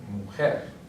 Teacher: So therefore it's going to be a palabra aguda. And the stress is going to be on the last syllable. So right here, mujer.